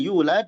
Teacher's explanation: di sana ada mad dua harakat yulad jangan lebih.